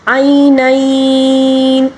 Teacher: کم از کم 2 الف کے برابر لین کو کھینچا جائے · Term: یا لین